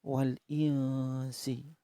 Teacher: nun sukun bertemu Sin nun sukun tersebut dibaca samar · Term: Ikhfa Haqiqi